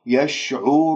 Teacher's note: ضميت الشفاه بطريقة صحيحة ووضعت رأس اللسان في المنطقة اللحمية أسفل الثنايا السفلى ورفعت أقصى اللسان، ما راح يطلع فيها غنة